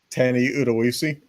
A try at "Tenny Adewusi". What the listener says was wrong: Then why is there an A at the beginning of his name?